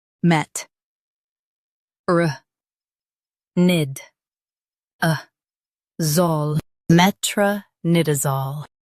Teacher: Focus on NID and keep zol light